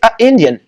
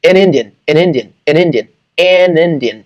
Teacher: Então esse N do N conecta com o I, a vogal do Indian